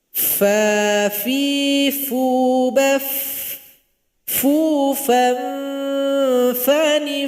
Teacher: ketika sukun masih ada bunyi aliran nafas. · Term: huruf fa